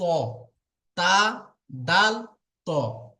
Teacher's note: জিভের আগা এবং সামনের উপরের 2 দাঁতের গোড়ার সাথে লাগিয়ে উচ্চারিত হয় তা, দাল, ত। তা, দাল, ত।